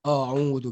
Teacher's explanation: So ada orang baca a'udzu. Bila baca a'udzu, itulah dimasukkan huruf hamzah telah ditebalkan.